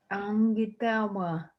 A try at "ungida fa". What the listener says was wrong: Okay, you can't pronounce the F. I guess you have a hard time with the F.